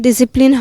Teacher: When you say discipline, we don't separate the S and C while pronouncing it. But in German, the S and Z, we have to slightly separate while pronouncing it.